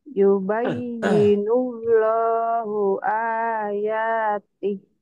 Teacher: Jadi panjangnya hilang ya kalau dihentikan.